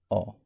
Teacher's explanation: मध्य स्वर अ के उच्चारण में हमारी जीभ न तो आगे की ओर जाएगी न ही पीछे की ओर जाएगी, वह मध्य में स्थिर रहेगी